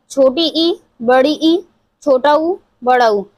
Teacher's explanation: जब हम इन चारों को उच्चारित करते हैं तो हमारा जो मुख है वो कम से कम खुलता है। बहुत ज्यादा नहीं खुलता। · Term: संवृत स्वर